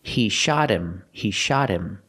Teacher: The T in shot is between vowels, so it changes to a fast D.